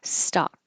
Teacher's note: the tongue is low and the jaw is low